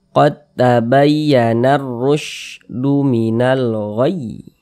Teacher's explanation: dibaca tebal, dibaca tafkhim, sehingga pangkal lisan kita naik terangkat ke atas ketika kita mengucapkannya. Kita tebalkan huruf ro-nya.